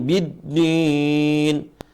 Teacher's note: Jadi din bukan suara hidung, biddin. Seringkali teman-teman baca ada suara hidung.